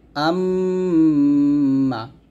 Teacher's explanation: মিমের উপরে তাসদিদ, তাহলে এখন অবশ্যই আমরা গুণনা করব, মিলে পড়বো এবং গুণনা করবো। এরকম হামজা মিম জবর আম, মিম জবর মা, আম্মা। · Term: ওয়াজিব গুণনা